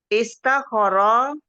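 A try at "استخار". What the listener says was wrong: Istakha panjang.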